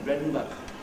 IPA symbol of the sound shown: m̩